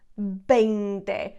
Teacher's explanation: notice that the V, I'm not pronouncing it as a V, I'm pronouncing it as a B. 20. In Spanish, the V's and the B's are always pronounced B, okay?